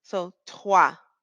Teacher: What we're really saying is toi, and then we roll the R. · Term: rolling R